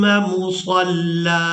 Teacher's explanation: اب یہاں پر بھی آپ لوگ علامات وقف دیکھ رہے ہیں، تو یہاں پر بھی وقف کریں گے تو وقف کی صورت میں ہم نے یہاں پر بھی لام پر ایک زبر ادا کرنی ہے اور اس کو ایک الف مقدار کھینچ کر ادا کریں گے